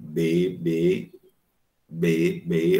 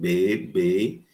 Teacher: Então, quando eu digo B, B, o articulador ativo é o lábio inferior. E o articulador passivo é o lábio superior. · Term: consoantes bilabiais